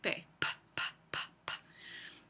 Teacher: los labios se cierran completamente entonces esa es una obstrucción la p es una consonante el flujo de aire se ve